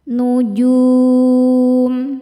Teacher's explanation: Selanjutnya ada hukum ghunah musyaddadah karena nun bertasydid. Cara bacanya berdengung. Tahan dengungannya kurang lebih dua harakat. Nujum. Ketika berhenti di sini hukumnya adalah mad arid lukun.